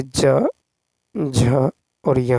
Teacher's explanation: तो तालव्य घोष वर्ण जो है ये ज, झ और य है